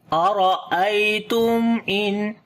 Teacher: After the meme sakin, the next letter is hamza, we make the clear sound of meme, and also sifte tawassut, like the little continuation of our sound. · after the noon sakin, the next letter is hamza. We make izhar halaki here, the clear sound of noon as well.